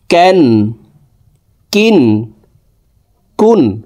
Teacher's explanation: ক্যাফ আলিফ দুই জবর ক্যান, ক্যাফ দুই জের কিন, ক্যাফ দুই পেশ কুন, ক্যান, কিন, কুন। কাফ হরফ জিব্বার গোড়া থেকে একটু আগে বাড়াইয়া তার বরাবর উপরে তালের সঙ্গে লাগাইয়া উচ্চারণ করে পড়ব।